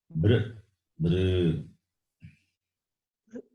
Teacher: The oo sound should not come. The lips are not rounded.